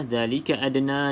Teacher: da salah satu daripada huruf qalqalah, maka lantunkan sedikit saja. Di sini qalqalah sughra sebab huruf da berada ataupun huruf qalqalah berada di pertengahan kalimah.